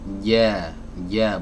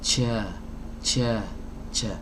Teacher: bagian tengah lidahnya diangkat ditempelkan ke langit-langit yang ada di atasnya